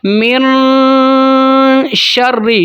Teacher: تو دیکھتے ہیں یہاں پر اخفا کرتے ہیں۔ من شر، شین کو پھیلائیں گے، شین حروف تفشی میں سے ہے، اس کو پھیلاتے ہیں